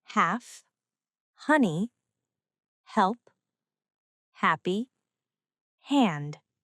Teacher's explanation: This is a breath sound. Air passes freely through the mouth. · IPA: /h/